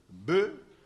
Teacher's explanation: Le B est labial et sonore.